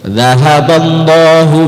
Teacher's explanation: kalau dha itu betul-betul disimpan anginnya, tidak ada angin sama sekali, angin sepoi-sepoi yang sedikit saja pun tidak ada, jadi harus disimpan betul.